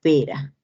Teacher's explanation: este es una vibrante simple sonora